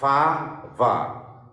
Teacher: These are labiodental consonants. When you pronounce the consonants, fa or va, we have to make a contact between the upper front teeth and lower lip. But these are not available in Bangla language.